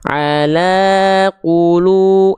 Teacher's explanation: Tapi kalau udah biasa, nadanya flat tapi tetap kadarnya 2 kali ayun atau 2 harokat. Ala qulu, nada saya flat tapi 2 harokatnya seperti kadar 2 kali ayun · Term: mad tabi'i